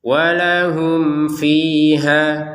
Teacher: fiha di sini untuk ha-nya ya kita baca dua harakat karena panjangnya dari ha tidak kita gabungkan dengan hamzah.